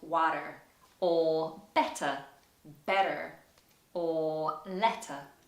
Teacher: particularly when t appears in the middle of the word. In some cases, you'll hear it sounded like a d in America.